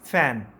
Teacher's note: निचले होंठ पे टच करते हुए हवा को स्लोली रिलीज करेंगे सॉफ्टली, और आवाज निकलेगी एफ की।